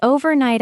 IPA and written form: ˌoʊ.vərˈnaɪt (overnight)